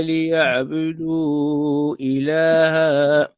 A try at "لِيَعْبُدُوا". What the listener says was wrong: مش يعبدوا لا الباء مضمومة يعبدوا إلا ليعبدوا